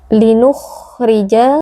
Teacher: kha sukun bersifat rakhawah, maka harus kita beri aliran suara